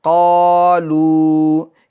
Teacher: یہ قاف میں الف مدہ ہوگا اور لام میں واو مدہ ہوگا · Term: حروف مدہ